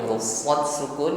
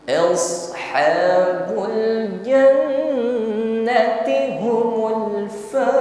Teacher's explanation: Kembali bertemu dengan huruf shad sukun ya, tas'adus saut. Jadi suaranya naik ke langit-langit ya, menebal bunyi hurufnya dan diiringi dengan sofir desis. Bukan sekedar s ya.